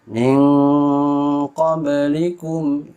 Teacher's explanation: Disebut juga al-martabatud dunya, terjadi pada ikhfa ab'ad disebabkan jauhnya makhraj nun dengan huruf ikhfa sehingga suara yang dihasilkan serupa dengan suara ang kalau dalam bahasa Indonesia